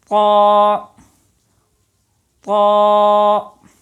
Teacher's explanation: لیکن نکلنے کی جگہ مخرج اس کا یہی ہے کہ زبان کی نوک اوپر والے دانتوں کی جڑ میں لگے، لیکن آپ اس کو جب پڑھیں گے تو آواز اوپر کی طرف اٹھانی ہے تاکہ یہ پر ادا ہو، موٹا ادا ہو، لیکن ہونٹ گول نہ ہونے چاہیے۔ ہونٹ گول ہوں گے تو واو کی آواز پیدا ہوگی، توا توا ایسی آواز ہوگی۔